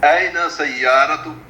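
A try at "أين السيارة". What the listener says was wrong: این السیارۃ، این السیارۃ، السیارہ معرفہ. ہاں سختی کے ساتھ سین پہ شد پڑھیں گے. این السیارۃ.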